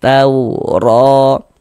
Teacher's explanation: huruf ro dibaca tebal, dibaca tabkhim. Sehingganya pangkal lisan kita naik terangkat ke atas ketika kita mengucapkannya. Tebalkan huruf rnya tauro ro. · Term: dibaca tafkhim